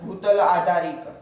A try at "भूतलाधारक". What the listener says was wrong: भूतल क्या है? आधे है कि आधार है? बस उसके बाद क जोड़ेंगे क्या बोलेंगे? तो री कहाँ से आ जा रहा है तुम्हारा?